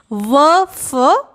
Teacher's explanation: दंत्योष्ठ से यानी निचले होठ और ऊपर के दांतों से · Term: दंतोष्ठ